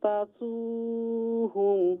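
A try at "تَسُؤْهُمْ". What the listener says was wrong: না তাসুহুম হামজা তাসুহুম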